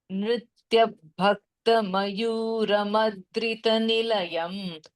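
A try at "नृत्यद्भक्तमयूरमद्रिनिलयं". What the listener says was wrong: Bhagini, Nrityad Bhakta Mayura Madri Nilayam. The D comes before the Bh. I'm hearing it the other way around. It is Nrityad Bhakta. And it is Nrityad Bhakta Mayura Madri Nilayam. I'm hearing a T somewhere in the middle, which is not there.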